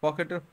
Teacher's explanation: পটা বের হয় আমাদের ঠোঁট থেকে, সেই জন্য এটা হচ্ছে ওষ্ঠধ্বনি।